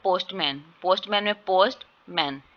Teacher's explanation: पोस्टमैन में जो है वो इसकी साउंड कम आ रही है, ए की जो साउंड है वो कम आ रही है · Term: शाह साउंड